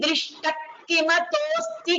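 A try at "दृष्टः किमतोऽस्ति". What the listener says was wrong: And Drishtah Kimato. So the Visarga wasn't.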